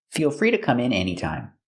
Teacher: the to is pronounced duh with a fast D.